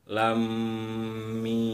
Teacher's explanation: Cara bacanya adalah dengan cara baca idgham musyaddadah, yaitu ditahan selama 2 ketukan. Jadi ketika bunyi lam masuk ke bunyi mim, lam jadi nya itu ditahan 2 ketukan.